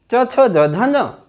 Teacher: च वर्ग च छ ज झ ञ तालु से बोले जाते हैं